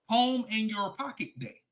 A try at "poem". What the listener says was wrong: That you sound like you saying palm, like the palm of your hand in your pocket.